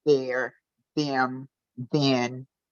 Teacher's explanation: take the TH away and add the D, which is a much more comfortable and historic positioning of talking